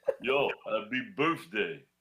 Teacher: You got a TH in the middle, but it makes a F sound.